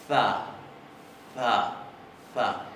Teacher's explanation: se va a pronunciar za, interdental, sorda, fricativa. Za, es como una Z suave y lo utilizan muchísimo. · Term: Thot